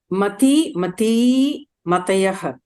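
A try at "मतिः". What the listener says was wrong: Matihi. The first is Matihi. Yeah, I'm not sure whether I heard the Visarga or not.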